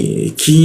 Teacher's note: lidahnya kita turunkan sehingga ada hembusan udara ketika membaca ki.